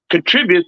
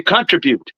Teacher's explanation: the word contribute that's with the accent on the second syllable